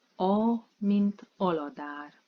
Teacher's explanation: Can you hear the long [ā] and short ‘a’ sounds?